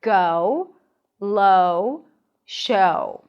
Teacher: the O's and go starts with a back open a sound and then you round your lips for an ooh sound. Technically it's more of a lax oo o.